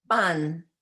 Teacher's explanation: It's a softer, less sharp sound than the p in English.